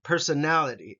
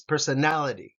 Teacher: personality again five uh syllables in this one personality and then nality gets the emphasis